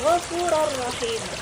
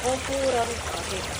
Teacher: Nah, di sini ada ghafuron, ro juga mendapatkan tanwin fathatain, dan kata berikutnya berawalan huruf ro rahimah ya. Jadi tanwin fathatainnya masuk ke dalam ro-nya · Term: idgham bila gunnah